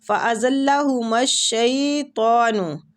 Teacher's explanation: زا سیٹی والا حروف ہے، لام کے ساتھ شدت سے ملائیں گے